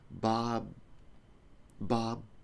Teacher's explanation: B so when you finish with a Bob Bob like that the air doesn't come out of my nose it sounds like a beat